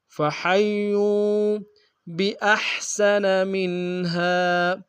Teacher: واو مدہ ایک انداز میں کھینچیں گے